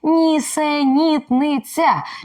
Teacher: м'який звук ц а ще тут чергування твердих і м'яких голосних звуків